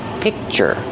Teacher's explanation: I don't release the C- sound. I just make the position and I stop the air.